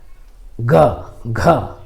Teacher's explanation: सघोष वर्ण का उच्चारण करेंगे तो एक झंकार आएगा